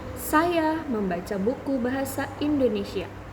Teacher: Pada kalimat tersebut, kata yang ditekankan adalah kata saya, karena mengandung pengertian bahwa pelaku yang membaca buku adalah saya, bukan yang lainnya. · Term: tekanan